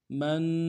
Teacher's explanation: من میں نون ساکن ہے، اخفا کریں گے۔